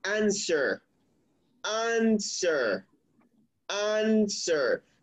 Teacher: so the stress goes on the first syllable answer so you don't say answer that is not the correct